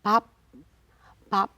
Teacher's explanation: that's how you pronounce the be as a final consonant but without releasing it pop you stop right there just stop in